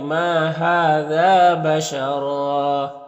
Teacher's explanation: اور یہاں پر بشر دو زبر ہے، یہاں پر وقف کریں گے تو ایک زبر کے ساتھ الف پڑھیں گے اور را کو پر پڑھیں گے